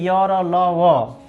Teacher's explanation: अर्ध ये जो य र ल व है वो घोष होते हैं